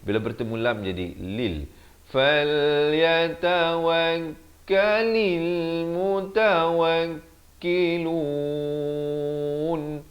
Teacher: Kalil bukan kalil, beza lil dengan lil. Lam bari kasrah bunyi li, bukan bunyi le.